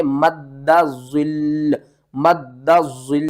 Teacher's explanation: जब हमने तशदीद वाले हर्फ के ऊपर वाक़फ़ करना होता है ना, तो फिर उसके ऊपर सख्ती भी होती है।